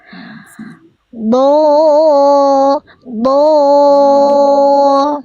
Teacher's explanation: Jangan ada percikan napas. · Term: jahar